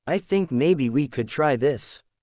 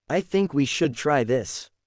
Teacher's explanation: Ending with a slight downward tone sounds confident.